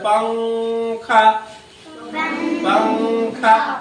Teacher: اخفا میں زبان اوپر نہیں سٹ رہا